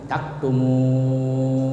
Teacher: dibaca panjang sampai 3 alif ya, atau 6 harakah sama dengan panjangnya mad wajib muttasil. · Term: mad arid lisukun